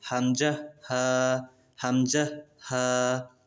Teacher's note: এক নাম্বার মাখরাজ হলকের শুরু হইতে